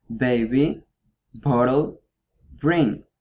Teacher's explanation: To produce that sound, you need to pressure to both lips in this way, ba, ba. And it's a stop sound in the manner of articulation because when you try to make that sound, the air is blocked for both lips. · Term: voiced bilabial stop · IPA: /b/